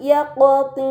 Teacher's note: dibaca secara melebur dengan gunah yang dipanjangkan Kemudian pada kata yaqtin terdapat huruf qf sukun ini dinamakan qolqalah maka harus dibaca secara memantul